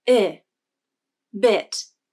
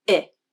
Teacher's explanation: When the I vowel is in a stressed syllable, the pitch of the voice glides up and then down. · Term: stressed I vowel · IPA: ɪ